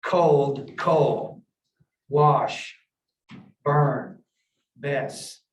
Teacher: there might not be pronunciation of that final consonant sound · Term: deletion of consonant sounds